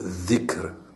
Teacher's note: sa sortie se fait du bout de la langue, en assemblant approximativement le son de la lettre D et Z